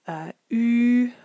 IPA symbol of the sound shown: u(:),u̯